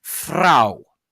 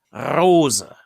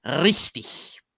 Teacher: the word for woman in German would be pronounced Frau, or rose would be pronounced Rose, or richtig, with the uvular rolled R